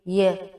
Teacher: आपकी जो जुबान है वह आपके तालु से टकरा रही है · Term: तालव्य